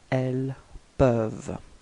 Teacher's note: final ENT is not pronounced, so you get elles peuvent